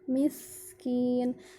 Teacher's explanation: sinnya harus dialirkan sehingga nafasnya keluar akan terasa ketika kita taruh tangan kita di depan mulut. Miskin, akan ada aliran angin atau nafas yang keluar dari mulut kita.